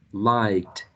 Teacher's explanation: Past tense, ed. Final sound, voiceless k. So we have a voiceless t